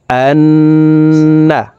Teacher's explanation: হরকতের বামে নুনে মিমে তাসদিদ হইলে সর্ব অবস্থায় নাকের বাসি থেকে গুন্নাহ করিয়া পড়িতে হয়। গুন্নাটি 3 সেকেন্ড পরিমাণ ধরে রাখতে হবে।